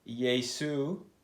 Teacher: in Greek, they did not have a sh sound. So in place of the sh, they put an s.